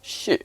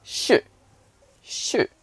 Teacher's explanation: the like directly falling tone which is this sh so it comes down